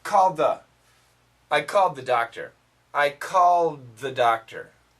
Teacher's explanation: So in this sentence, called the, we keep the L and we keep the TH, but actually there's not much of an ED